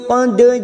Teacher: dal sukun qalqalah sugro karena mati asli di tengah kalimat, jangan lupa dipantulkan.